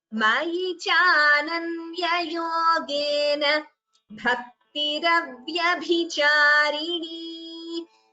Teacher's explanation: Bhakti, bha is Mahaprana. · Here Ananya Yogena, na is a hrasva. So please do not prolong it while chanting.